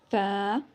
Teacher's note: जब ऊपर वाले अगले 4 दांतों के किनारे जब नीचे वाले होंठ की तरी से लगें तो फ़ अदा होता है